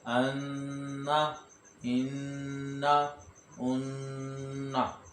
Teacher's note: इसके नून मुशद्दद और मीम मुशद्दद में गुन्ना करके पढ़ना है, हिज्जे करते वक्त भी गुन्ना पढ़ना है और रवां करते वक्त भी गुन्ना करना है।